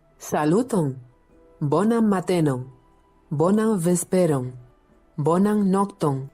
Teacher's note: this speaker here isn't really hitting their R sounds, just to be aware.